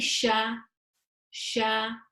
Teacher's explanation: So where is the sheen pronounced from? It's pronounced from the middle of the tongue, raised up towards the upper palate.